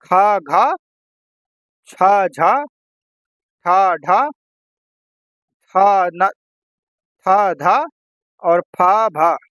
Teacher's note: हर वर्ग का दूसरा और चौथा व्यंजन होगा महाप्राण